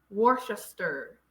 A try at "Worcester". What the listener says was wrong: Worcester. It's not cess. Worcester. So it's stir.